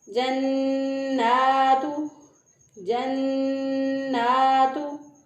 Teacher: तो एक अलिफ के बराबर यहाँ पर गुन्ना की मिक़दार जो है उसको नाक में ठहराते हुए, गुन्ना की आवाज़ को नाक में ठहराते हुए एक अलिफ के बराबर गुन्ना करेंगे। और नून खड़ी ज़बर ना है तो एक अलिफ के बराबर लंबा भी करेंगे इसको। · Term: नून मुशद्दद